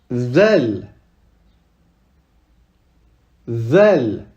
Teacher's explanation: Ici, pareil, on met la langue entre les dents.